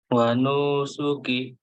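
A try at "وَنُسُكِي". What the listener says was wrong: Huruf ke-1, 2, dan 3 itu pendek. Tidak ada yang memanjangkannya. Pendek. Wa nusuki.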